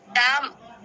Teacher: ता ऊपर के दांतों की जड़ को टच होने से आवाज आती है